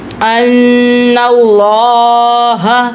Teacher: نون کے اوپر تشدید ہے تو اس لیے ہم نے ادھر گنہ کرنا ہے، ناک میں سے آواز نکالنی ہے